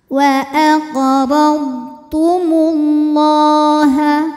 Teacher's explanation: lam jalalah dibunyikan secara tafhim karena huruf sebelumnya berbaris damah maka huruf lam dibaca tebal